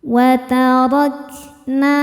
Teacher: Ro dibaca secara tafkhim karena harokatnya di atas yaitu harokat fathah. Maka ro dibaca dengan tebal. Watarakna. Nah hukumnya mad tabi'i dhahiri karena ada alif didahului harokat fathah.